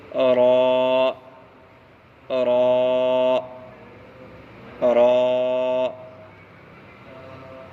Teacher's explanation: را کا مخرج زبان کا کنارہ اور کچھ زبان کی پشت اور اوپر کے دونوں دانتوں کے مسوڑے سے را ادا ہوتا ہے